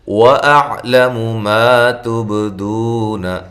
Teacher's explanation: اعلم عین کو واضح نکالیں، لام باریک میم باریک، ما الف مدہ ہے، تب تا کو باریک با پہ قلقلہ، دو وا مدہ ہے، نون کو لمبا نہیں کرنا.